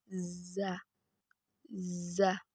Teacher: Huruf za dikeluarkan dengan ujung lisan kita hampir di atas gigi seri bagian bawah. Diucapkan dengan mengalir suara tanpa diiringi dengan udara.